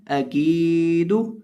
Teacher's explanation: आऊदू आऊदू, हमज़ा ज़बर आ, काफ लेरिया की दाल पेश दू अकीदू, हमज़ा ज़बर आ, काफ लेरिया की दाल पेश दू अकीदू। अब यहाँ हम काफ को खींच के पढ़ेंगे, काफ को लंबा करके पढ़ेंगे।